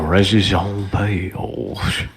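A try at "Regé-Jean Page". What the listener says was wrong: You guys are pronouncing too many of the letters in that name.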